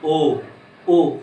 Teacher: देखो मैं बोलूं ओ, होंठ भी वृत्ताकार बना रहे हैं ना, और कंठ से भी निकल रही है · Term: कंठ ओष्ठ